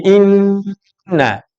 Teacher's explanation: Nah, nun yang ditasydid mesti keluarnya dari hidung.